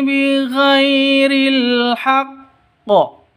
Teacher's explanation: sifat lin lentur lemas tidak boleh disentak